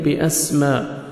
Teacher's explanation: سین کو سیٹی سے پڑھیں گے